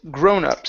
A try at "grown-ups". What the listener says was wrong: So here you added a D sound at the end, saying grown-ups.